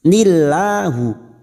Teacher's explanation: lam jalalah yang sebelumnya kasroh kita baca tarkik atau tipis